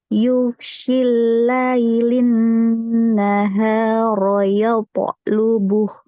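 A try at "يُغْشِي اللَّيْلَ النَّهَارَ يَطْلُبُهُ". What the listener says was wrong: Pertama, ghainnya nggak boleh keluar udara. Dan kita baru masih ada udaranya. Kemudian baca ya polubuh. Ya-nya jangan jadi yo. Jangan jadi yo. kok nih gitu. Hati-hati ya.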